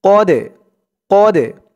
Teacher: এই দালটা হচ্ছে কলকলার হরফ ধাক্কা দিয়ে পড়তে হবে